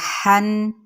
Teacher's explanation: ہا دو زبر حن، یہ ہا باریک ہے، وسط حلق سے ادا کریں گے اس کو۔ ہا دو زبر حن، ہا دو زبر حن، پر نہیں کرنا اس کو، باریک تھوڑا سا اسمائل کرتے ہوئے۔